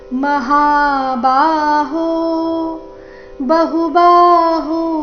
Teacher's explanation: ಮಹಾಬಾಹೋ ಬಹುಬಾಹು, ಬಹು ಎರಡು ಅಕ್ಷರ ರಸ್ವ, ಬಾಹು ಎರಡು ಅಕ್ಷರ ದೀರ್ಘ